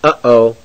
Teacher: A glottal stop is a break in the voice that occurs, for example, before the U and the O in the interjection uh-oh.